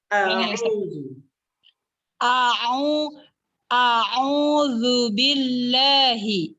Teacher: huruf hamzanya nggak boleh condong ke ain karena dia itu beda makhraj. Harus keras, dikerasin.